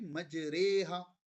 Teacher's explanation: زیر کی بھی آواز نہیں آ رہی، زبر کی بھی نہیں آ رہی، درمیانی آواز، یعنی زیر کی آواز کو امالہ کہتے ہیں کسی کی طرف مائل ہونا، جھکا ہونا.